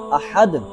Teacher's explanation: اب احد میں ہا اور ہا کا ہم نے فرق کرتے ہوئے ہا کو پڑھنا ہے۔ ایک ہوتی ہے ہا جو حلق کے وسط یعنی درمیان حلق سے گلے کے درمیان سے ادا کی جاتی ہے